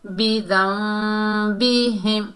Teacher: اقلاب کا قاعدہ ہوگا، نون کی آواز کو میم میں بدلیں گے